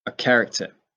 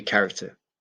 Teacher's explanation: the r sound we don't really say in the end of a word in uk accent